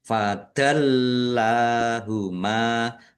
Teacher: Fadallahuma lamnya ada tasdidnya dibaca dobel ditekan biar tampak dobel fadallahuma lam fathah berdiri mad thobi'i mim fathah alif juga mad thobi'i dibaca panjang dua harakat